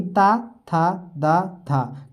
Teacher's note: क्योंकि ये दांत से टच होते हैं तब बोलते हैं, तो ये आपके दंत वर्ण कहलाते हैं।